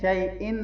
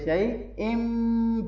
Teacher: اقلاب کیا کریں گے کہ یہاں ہم میم کے ساؤنڈ پڑھیں گے